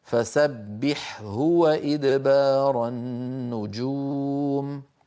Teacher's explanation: لا بد من بيان الحاء عند الهاء